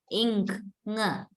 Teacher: Velum means your soft palate with the back of the tongue. Your back of the tongue rises and touches your soft palate. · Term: ng sound